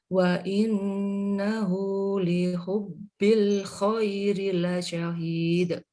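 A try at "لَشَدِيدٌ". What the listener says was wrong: Lasyadid. Dal.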